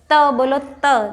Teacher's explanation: दांतों पे जीभ लगती है। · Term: दंत्य